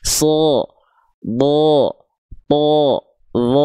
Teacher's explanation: Huruf tebal itu intinya karakternya. Ketika dia berharakat fathah pasti terdengar tidak clear vokal a tapi condong ada vokal kayak O-nya.